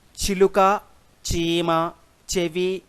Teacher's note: ఈ ఈ ఏలతో కూడినటువంటి చ జలను తాలవ్య చజలు అని అంటారు.